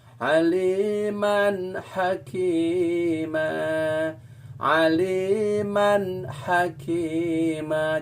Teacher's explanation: harus dibaca jelas, idhar. Dibaca jelas, tidak boleh dengung.